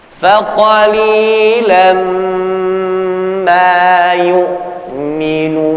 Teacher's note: Ya, sifat gunnah itu biasa 2 sampai 3 ketukan ditahan. Ya, dan makhrajnya gunnah ada di khayshum, di pangkal hidung. Ya, persis seperti orang bindeng. · tanwin bertemu dengan huruf mim, idgham bi gunnah. Idgham artinya idkhal, yakni memasukkan, bi gunnah dengan memperhatikan gunnahnya.